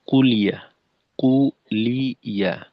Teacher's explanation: লামের জজমের পরিবর্তে অনেকটা লামের জেরের মতো, অর্থাৎ কুলিয়া, কু ইয়া, তো লামে জের হয়ে যাচ্ছে,